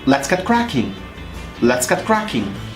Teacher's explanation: when I pronounce get cracking, I need to pause just a little bit since connecting T and C is not possible. T and C are plosive sounds, which means they are created by holding up air and then blowing the air, thus creating the sound.